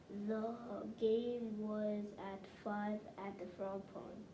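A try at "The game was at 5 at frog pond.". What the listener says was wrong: Only thing is you added a word here. You said at the frog pond. At frog pond.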